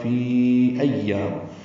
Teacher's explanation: حمزہ آنے کی وجہ سے مد منفصل لمبا کریں گے، 4 حرکات